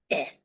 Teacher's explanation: So eh is low, mid, front. This is a lax vowel, eh.